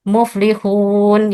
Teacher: Yang salah huruf hun itu keluar dari rongga hidung. Seharusnya hurufnya hanya keluar dari tenggorokan dan rongga mulut. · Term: suara gunnah